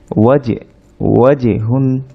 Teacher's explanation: জিম সাকিন কলকলা হয় অর্থাৎ সাউন্ডটা রিভার্ব হবে